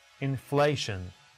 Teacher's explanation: Which syllable should be stressed? The second syllable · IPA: /ɪnˈfleɪʃən/